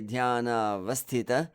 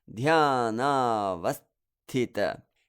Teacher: I don't just say dhyana vasthita. I give the heaviness to that vas syllable by creating a pause after the s.